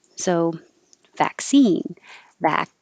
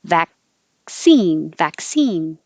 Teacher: This is spelled with two C's, and you don't see the K, but there's a K and an S. So vaccine, vac, and you don't release the K. Vaccine, vac.